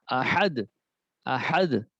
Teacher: عین ہا وسط حلق سے